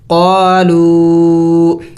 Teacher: قالوا، یہاں پہ بھی دیکھیں واو مد ہے اور اس کے اوپر چھوٹا سا مد بھی ہے، تو اس کو ایک الف کے مقدار سے تھوڑا سا اور بھی زیادہ لمبا کیا جائے گا